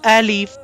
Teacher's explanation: the point of pronunciation of this letter is emptiness of the mouth